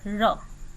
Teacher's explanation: र का उच्चारण स्थान है मूर्धा